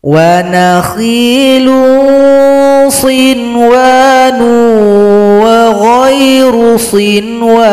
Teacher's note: harus dibaca dengan 'izhar', jelas tanpa bunyi sengau. Karena di sini ada huruf ' tanwin' yang bertemu dengan huruf 'wau', maka itulah yang disebut 'idgham'. · Sedangkan sin wa nun ini dia dalam satu kata, maka tidak boleh dibaca dengung. Dibaca jelas saja.